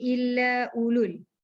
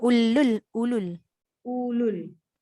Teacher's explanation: Dia tak baca U. Dia tak baca panjang. Jadi illa ulul. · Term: pendek